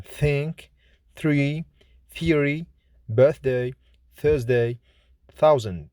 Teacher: Th is voiceless, fortis, dental, fricative consonant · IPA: /θ/